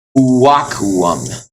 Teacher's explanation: So the first U became a consonant with a W sound, and the last two U's became vowels.